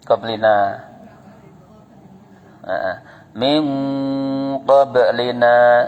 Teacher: Bibirnya harus moncong. Pas samarnya, pas dengungnya itu bibirnya moncong.